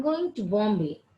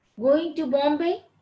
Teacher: it's a statement, falling tone. Going to Bombay, it's a question, rising tone.